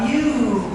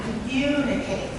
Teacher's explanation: We have a clear vowel, mu, and it's long, and it's high. It's a clear, long, and high.